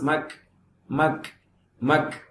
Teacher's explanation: அல்லது மக் தஸபத், மக் மக் அப்படின்னு விழுங்கியும் கூடாது. மக்கு அப்படின்னு சொல்லி கல்கலாம் செய்யக்கூடாது. மக் அப்படின்னு அதை கட் பண்ணவும் கூடாது.